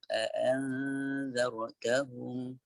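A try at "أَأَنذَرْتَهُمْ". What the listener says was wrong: Pada ra tebal lagi. Anzartahum.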